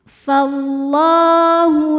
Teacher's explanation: karena ada baris fathah tegak di atas huruf lam cara membacanya dipanjangkan lamnya dua harakat saja